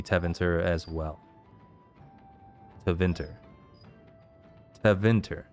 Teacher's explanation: I'm putting the emphasis on the second syllable.